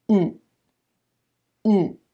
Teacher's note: the air is actually resonating in the nose and stopping in the throat so you get the nasal quality of the MM with the stopping of the T